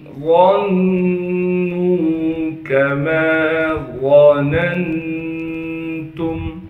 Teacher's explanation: وَأَنَّهُمْ ظَنُّوا كَمَا ظَنَنْتُمْ، غاں کو موٹا کر کے پڑھیں گے، غاں کو نون سے ملائیں گے، اس لیے کہ نون پر تشدید ہے۔ تشدید ہونے کی وجہ سے غاں کو نون سے ملانا بھی ہے، اور نون پر ایک الف کے مقدار غنہ بھی کرنا ہے۔ پھر نون کو آگے واو مدہ سے ملائیں گے، اس لیے کہ واو مدہ ساکن ہے۔